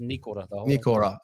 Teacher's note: it's no emphasis on the or, it's just Nikora. A little bit of emphasis on the knee, but just Nikora.